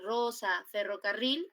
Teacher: cuando la r normalmente comienza adelante suena como doble doble r